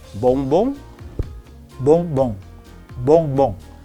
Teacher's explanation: So you can't hear the word bonbon correctly because the ong sound is being pronounced with partial air coming through the nose. That is what we call nasal sound.